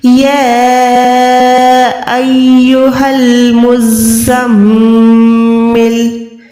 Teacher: یا کھڑی زبر یا کے اوپر چھوٹی سی مد ہے، اس کو ہم نے 2 سے 3 سیکنڈ لمبا کرنا ہوتا ہے